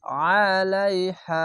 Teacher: খালা আলাইহা জবর পাঁচ খাল আলিফ এক আলিফ টেনে পড়বেন আলাইহা আইনটিকে মোটা করে গলা চিপে পড়বেন